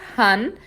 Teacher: E esse N é só você tocar com a ponta da sua língua no céu da sua boca.